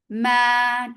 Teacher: The long vowel should not go into your nose.